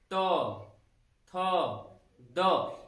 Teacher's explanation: यानी कि जब तो वर्ग के वर्णों का उच्चारण कर रहे हैं तो हमारी जो जीभ है ये दांतों से, दोनों दांतों से टच हो रही है, तो इसलिए इन तो वर्ग के सभी वर्णों को दंत वर्ण के नाम से भी जानते हैं।